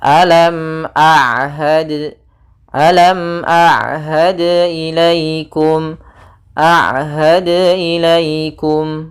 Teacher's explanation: ain di antara keduanya tidak terlalu ditahan dan tidak terlalu dialirkan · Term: bainiyah